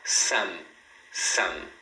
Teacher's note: quando eles falam m no final você deve fechar a boca. Então você fala some, som.